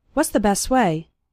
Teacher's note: And the T at the end of best also kind of disappears.